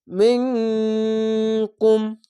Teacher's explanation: এখানে ইখফা গুনা বাংলা অনেস্কার মতো মিম নুন জের মিন কাফ মিম পেশ কুম মিন আইনটিকে মোটা